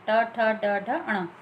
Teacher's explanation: ऐसे ही ये मूर्धा से निकलने वाली, यानी उच्चारण स्थान हमारे गले के अंदर से, जहाँ से मुख के अंदर गले तक ये जहाँ से निकलते हैं वो स्थान हुए। मूर्धा स्थान से निकलने वाले ट वर्ग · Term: मूर्धन्य